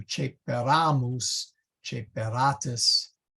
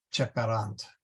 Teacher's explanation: So the accent is cheperam, cheperas, cheperat, and cheperant. When we get to the eramus and the eratus, then this vowel is long. That is the second to the end, and the accent shifts to cheperamus, cheperatus versus cheperant.